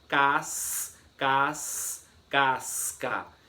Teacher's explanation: Eu consigo ouvir o som do S e do C de forma separada